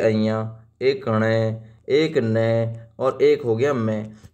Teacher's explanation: म जो प्रत्येक वर्ग का पंचम व्यंजन है यही नासिक्य है जिसका उच्चारण नासिका नाक से होता है जिसे नरम तालू को नीचे लाकर उत्पन्न किया जाता है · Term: नासिक्य व्यंजन